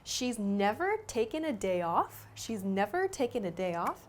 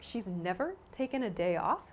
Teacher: So again, with my voice, I emphasize the word never.